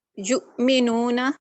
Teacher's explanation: جھٹکا لگے گا, حمزہ پہ جھٹکا لگے گا. حمزہ ساکن ہے نا کیونکہ. جھٹکا لگا کے اسے روک دیں گے.